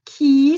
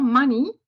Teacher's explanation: c'est un I long, mais on a aussi l'argent, money, avec un I court, mais ça s'écrit Y aussi.